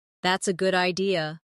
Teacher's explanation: If someone says that's a good idea, notice how their voice rises at the end.